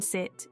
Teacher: The tongue is positioned high and towards the front of the mouth, and the lips are unrounded. The sound is produced with a relatively short duration and a slightly more relaxed tongue position compared to similar vowels. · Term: high front unrounded vowel